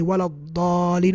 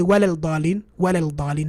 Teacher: we don't pronounce the lam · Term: idgham